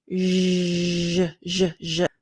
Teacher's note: it's a similar mouth placement as sh, but there's a vibration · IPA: /ʒ/